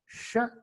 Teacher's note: Sh is a voiceless palato-alveolar fricative consonant